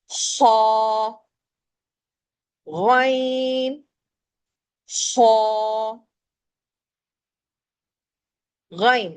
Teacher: یہ دونوں حروف جو ہیں موٹے پڑھے جاتے ہیں، اسے کہتے ہیں موٹا پڑھنا تفخیم